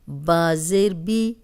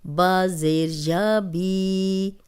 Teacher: اب دیکھیں جزم والی یا اور پیچھے کسی بھی حرف پہ زیر ہوگی تو وہ یا مدہ ہے، اس کو 2 حرکات لمبا کریں گے۔